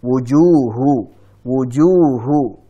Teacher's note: Ini juga hati-hati saat mengucapkan wujuh, jangan masuk hidung, jangan wujuh.